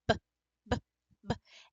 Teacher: the sound of the B the B is a b and even when I say it you can still hear a slight uh at the end because of the nature of these sounds and how they are stops and the sound stops really quickly they want to go right